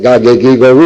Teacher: Tenemos que buscar la oclusiva lingüovelar sonora, el fonema.